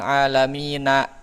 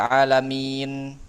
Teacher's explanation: Nah, itu sukunnya sukun arid min. Ya, kan aslinya kan alamina gitu. Tapi karena kita sukunkan karena wakaf jadi alamin. Nah, itu namanya sukun arid.